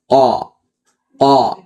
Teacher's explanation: Jadi tanpa ada aliran napas yang ee deras ya tertahan napasnya kemudian dia kuat huruf qof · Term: syiddah